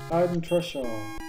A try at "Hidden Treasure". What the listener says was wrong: Was hast du das gerade gesagt? Alter, du hast ernsthaft Heiden gesagt.